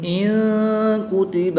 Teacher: نون ساکن کے بعد کاف حروف اخفا میں سے ہے تو یہاں پر اخفا ہوگا، یعنی غنہ زمانی کر کے پڑھیں گے